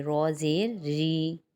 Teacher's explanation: لیکن جب زیر اس پہ لگ جائے گا تو اس کی آواز باریک ہو جائے گی۔ را زیر ری، ٹھیک ہے۔